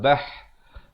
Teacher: Lal bah, ba baris atas bertemu ha. Ha makhrajnya di mana? Makhrajnya di pertengahan kerongkong.